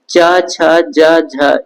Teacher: च छ ज झ स्पर्श संघर्षी व्यंजन है